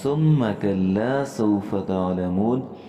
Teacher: ثم کے اندر ہم نے میم کو مشدد دیکھا ہے اور یہاں ہم نے غنہ کرنا ہے